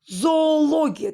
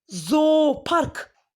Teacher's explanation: Zooparkda da 2 o bir uzun o kimi tələffüz olunacaq.